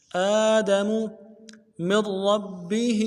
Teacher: آدم من ربه میم کو را کے ساتھ ملانا ہے، نون کے ساتھ نہیں ملائیں گے، را کو موٹا کریں گے، تشدید زور دیں گے